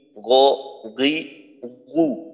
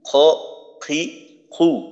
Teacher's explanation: গইনটা হলো হলকের শেষে একটু নিচের অংশে, খ হলো গইনের তুলনায় একটু উপরে।